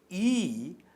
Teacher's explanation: ان مصوتوں کی ادائیگی میں زبان کا اگلا حصہ یا زبان کا پچھلا حصہ بالائی حصے کی جانب، بالائی اونچائی کی جانب اٹھتا ہے، اور اسی وجہ سے ان مصوتوں کو بالائی مصوتہ کہتے ہیں۔ لہٰذا ای کو اگلا بالائی مصوتہ کہتے ہیں، کیونکہ اس کی ادائیگی میں زبان کا اگلا حصہ اوپر کی جانب اٹھتا ہے